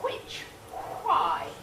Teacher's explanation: a fricative it may remind you of a w and that's very good because again it's labial and velar